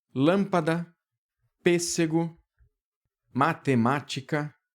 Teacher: Vamos revisar aqui com uma regra bastante simples, que é a regra das palavras proparoxítonas. Essas palavras são aquelas cuja sílaba tônica é a antepenúltima.